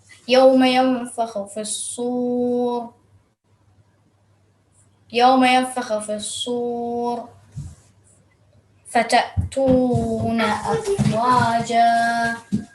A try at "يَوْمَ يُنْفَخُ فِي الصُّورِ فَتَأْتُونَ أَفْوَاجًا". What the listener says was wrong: You just, I think, changed the stroke on top of kha.